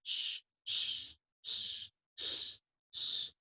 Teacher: SH, S, K, and F, all the sounds don't have vibration. So when you say wash, sound is sh, sh, sh, sh, sh, and that sound doesn't have any.